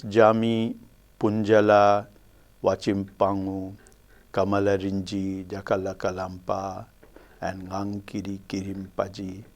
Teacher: in all these words you will notice that the initial syllable has primary stress